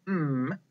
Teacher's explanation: letter its name is m the sound we make is um it is a voiced sound it is a consonant sound and it is a nasal sound that goes through our nose